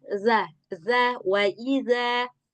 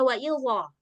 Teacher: huruf zal dia nggak punya sifat isti'ala, nggak punya sifat itbaq. Jadi mengucapkannya nggak perlu tebal